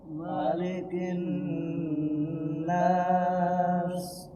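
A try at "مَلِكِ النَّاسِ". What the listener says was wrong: Iya.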